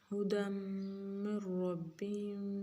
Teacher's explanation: میم مشدد ہے تو لہٰذا دال کی تنوین کو ہم واضح نہیں پڑھیں گے، غنّے کی شکل میں بدلیں گے، ادغام کریں گے